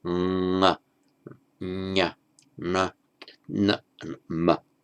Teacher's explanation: the nasals of each, where there's no stopping of the breath, but the air still flows through the nose